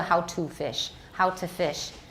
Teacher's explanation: And the vowel in two has only a few vocal pulses, making it much shorter than any of the other vowels in the sentence. The fricative f at the beginning of fish is a little less loud, has a slightly smaller amplitude than the fricative at the end of the word.